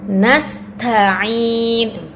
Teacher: sin sama ta ini mempunyai sifat hamas. Biasanya kalau ada dua huruf yang mempunyai sifat hamas dua-duanya, maka biasanya ada yang dikalahkan.